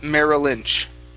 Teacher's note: so you want to connect the two l sounds